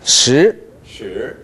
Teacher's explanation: 十를 그냥 쭉 올라가세요